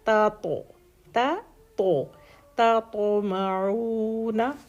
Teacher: پہلے تا ہے سافٹ لیٹر اور پھر تو کلکلا بھی ہے اور ہیوی لیٹر بھی ہے